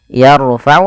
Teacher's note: tebalkan huruf ro-nya karena huruf ro sukun didahului fathah